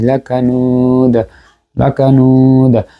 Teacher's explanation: লাকানুদ সাকিন হওয়ার কারণে এখানে কলকলায় কুবরা হয়েছে।